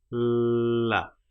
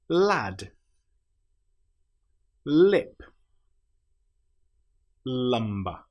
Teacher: We put our tongue up behind our top teeth, L, and then we flap it down, L. Some examples of this might be lad, lip, lumber. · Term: the letter L